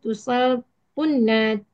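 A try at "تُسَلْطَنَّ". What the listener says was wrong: tusalton. Ton, tusalto. To, bukan tu. Tusalton. Tusalton. To, fathah. Tusalton.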